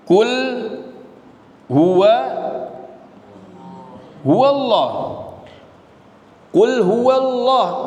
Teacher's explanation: Lam dibaca tebal. Ya, dia dibaca tebal jika sebelum lafaz Allah terdapat fathah atau dhammah.